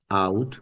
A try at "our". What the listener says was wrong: Our moved our. have moved our, not moved out. आपने out बोला. R. R.